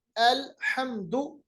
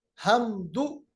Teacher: हा का जो मखरज है वो वस्त हलक से अदा होता है, वस्त हलक, दरमियानी हलक।